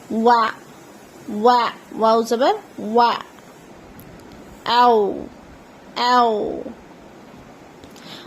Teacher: واو دونوں لبوں کا آپس میں ملاؤ اور ہونٹ کا گول ہونا، یعنی کہ دونوں لب کا جو حصہ ہے، لاسٹ والا حصہ ہوتا ہے، وہ ایک دوسرے سے ملتا ہے اور ہونٹ گول ہوتے ہیں. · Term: حرف واو